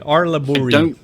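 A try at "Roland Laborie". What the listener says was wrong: I don't think you pronounce the R I think it's just labor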